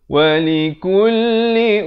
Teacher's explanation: dengungkan di sini mim sabdu wajibul gunnah, dengung dua harakat